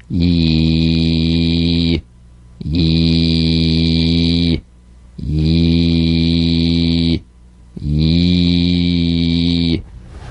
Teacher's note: A touch of the Y buzz before another vowel.